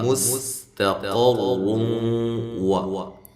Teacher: یہاں سین کو باریک سیٹی سے، تا باریک ہے، قاف کو خوب موٹا کریں، را کو بھی موٹا کریں، را کے اوپر پیش ہو، زبر ہو، اب پیش میں سے پیش ہو، الٹا پیش ہو یا دو پیشیں ہوں، را کو موٹا کریں۔